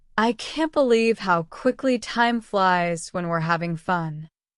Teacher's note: make sure to put emphasis on quickly to reflect the surprise. Use a slightly rising tone on time flies to show excitement. Don't forget to drop the G sound in having common in spoken English.